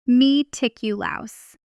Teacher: The word meticulous is stressed on the third syllable. Me ticulous.